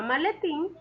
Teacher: en la palabra maletín, la sílaba tónica es tin. Es una palabra aguda, ya que la mayor fuerza de voz o su sílaba tónica es la última sílaba.